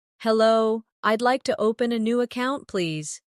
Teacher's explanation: Notice the stress on open and account, so the purpose is clear.